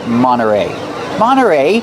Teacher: Monterey you have NT you don't hear the T when it's between vowels Monterey you can say Monterey but you'll